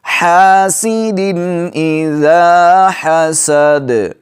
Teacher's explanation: دال کے نیچے دو زیر ہیں، یہ نون تنوین ہے، اس کے بعد حروف حلقی میں سے حمزہ ہے تو غنہ نہیں کریں گے۔ حاسدٍ اذا حسد، دال پر قلقلہ کریں گے وقف کی حالت میں۔ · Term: اظہار